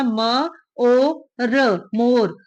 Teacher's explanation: ਖੁੱਲੇ ਮੂੰਹ ਵਾਲੇ ਓ ਦਾ ਉਚਾਰਨ ਆ ਜਿਹੜਾ ਉਹ ਇਸ ਰੂਪ ਦੇ ਵਿੱਚ ਹੋੜਾ